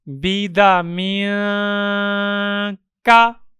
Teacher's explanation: تنوین کے پڑھنے میں جو نون آتا ہے اس نون کو چھپا کر پڑھیں گے۔ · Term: اخفا